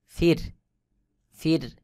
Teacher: র সাকিন এর আগের হরফে জের রয়েছে এটাকে পাতলা করে পড়তে হবে